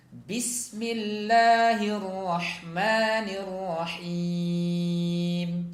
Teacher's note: huruf ba di situ harus dibaca dengan tekanan yang kuat ya, jangan sampai seperti huruf P